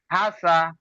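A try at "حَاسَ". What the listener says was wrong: প্রথমে হাজি টান হবে প্রথম বানান করবার সময় যেমন টান দিলেন হা আলিফ জবার হা বলে টান দিলেন টান হবে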